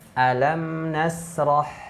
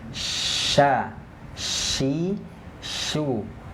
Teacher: kalau shin dia ada sebaran angin